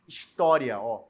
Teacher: isso é um ditongo crescente porque o i é uma semivogal e o a é uma vogal